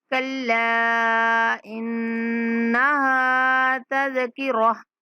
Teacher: انا پہ غنہ کریں گے، ہا کو کھینچیں گے ایک الف تک